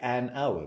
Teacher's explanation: when I say hour, I don't use the H. Therefore, the H is silent and I still use an.